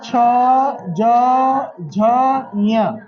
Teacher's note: ये सभी कहा से बोले जाते तालू से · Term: च वर्ग